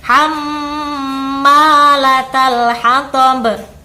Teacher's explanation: Itu kalau dalam ilmu tajwid dinamakan bacaan gunnah. Jadi ada mim yang ditasydid, cara bacanya harus mendengung. Kita tahan sebentar